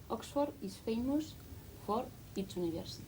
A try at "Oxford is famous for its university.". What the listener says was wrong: Okay, good. We need it quicker. Listen to me. Oxford is famous for its university. Oxford is famous for its university.